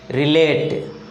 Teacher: The stress is on the second syllable. The stress doesn't change after adding the plural s.